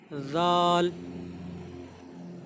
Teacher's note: ज़ाल ये सा की तरह है, जैसे हमने सा बोला था वैसे ही ज़ाल भी बोला जाता है, ज़बान की नोक और ऊपर वाले दांतों का सिरा, ज़ाल। ज़ाल के बाद आ जाता है रा।